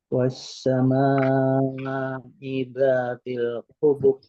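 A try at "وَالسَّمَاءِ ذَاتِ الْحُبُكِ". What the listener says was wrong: Nah, hubuk ada tarik sedikit. Hubuk.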